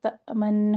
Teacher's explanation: حمزہ پہ جھٹکا، نون ساکن کا اظہار. تأمن نون ساکن ہلے بھی نہ.